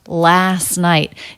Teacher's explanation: then we have a stop t at the end of night · the t between two consonants like this even when they're in two different words is often dropped last night it's just the s sound into the n sound